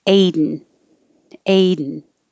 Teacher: your tongue is going to the d position anyway so you can just hold it there for the n